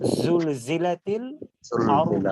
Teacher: তারপরে আমাদের জাস্টখালি দাঁতটা চেঞ্জ হবে, জাটা উচ্চারণ করব নিচের দাঁতের আগা থেকে, জিহ্বার আগা নিচের দাঁতের আগা থেকে